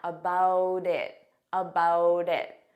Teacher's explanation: I'll actually use a soft D sound, and you'll hear that sound on both sides of the word, and I'll say it as one. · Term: linking